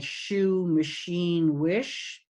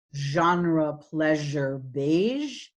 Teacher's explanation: Sh is voiceless, zh is voiced, and they are lingua palatal, tongue and hard palate.